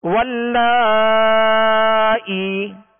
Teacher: یہاں یا مدہ ہے، اس کو ایک الف کی مقدار میں کھینچیں گے